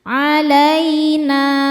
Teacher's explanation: Na hukumnya mad thobi'i zohiri karena ada alif sebelumnya baris fathah. Cara bacanya huruf nun panjang dua harakat. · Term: mad tabi'i dhahiri